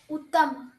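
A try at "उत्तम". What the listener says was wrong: Uttama. You have to pronounce it completely.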